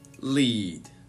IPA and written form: liːd (lead)